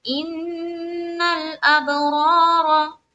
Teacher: ان میں نون مشدد کا غنہ لام سے ملا دیا